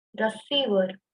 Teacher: >> Here you can observe that the clear release of air is present in the form of H in the utterance